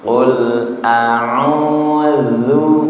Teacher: au panjang karena ada domah menghadapi wawu sukun mad thobi'i